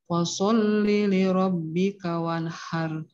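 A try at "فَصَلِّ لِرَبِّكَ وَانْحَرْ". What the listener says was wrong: Nah, fa-nya tipiskan. Fa, fasol, fasol.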